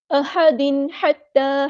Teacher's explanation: अहदिन हमज़ा की आवाज़ वाज़ेह अदा करनी है, हा को गुस्सा है लेकिन मिडल थ्रोट से अदा करना है